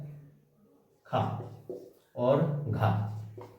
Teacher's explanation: इसमें ऐसे बैंड जिनमें हा नहीं है उसमें अल्प प्राण है, जिसमें हा नहीं है उसमें अल्प प्राण है, और जिसमें हा है तो उसमें महाप्राण है। तो इनके उच्चारण में वायु अधिक निकलती है और इसमें हा की हकार ध्वनि होती है